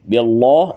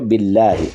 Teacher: اللہ کے لام کو باریک پڑھنا ہے